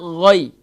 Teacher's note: تو یاد رکھیے غین کو ہم نے اس طریقے سے پڑھنا ہے، غین یا زبر غی. غی یہ حروف لین میں سے، تو ہم اسے نرمی سے ادا کریں گے